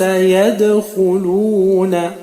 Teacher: Dans le mot يَدْخُلُونَ, nous avons un dal qui est sakin, donc qalqala.